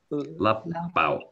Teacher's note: The P, you hold your lips closed longer.